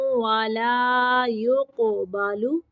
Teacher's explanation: پہ تنوین کو ظاہر کرنا ہے، عن نفس شیئا ولا یقبل، قاف کو قلقلہ پڑھنا ہے